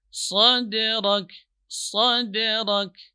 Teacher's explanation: Ra termasuk huruf tafkhim, itu huruf tebal. Huruf tikrar, huruf yang bergetar.